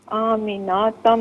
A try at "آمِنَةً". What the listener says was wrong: میری بہن نون پر زبر ہے، اسے بغیر کھینچے پڑھیں. آمینتم